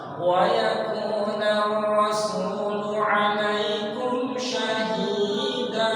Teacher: panjangnya hi harus sama dengan panjangnya da. Syahida sama, ditimbang sama.